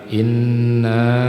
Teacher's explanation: itu nunnya adalah bertasdid. Jadi dibaca berdengung. ghunah membacanya jangan inna tapi inna.